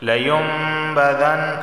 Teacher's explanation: نون ساکن کے بعد با آیا ہے تو یہاں پر اقلاب کا قاعدہ لاگو ہوگا، یعنی یہاں بھی غنہ ہوگا. لیم، اور علامت کے طور پر وہاں پر چھوٹی سی میم لکھ دی جاتی ہے، اس طرح پڑھیں گے اس کو.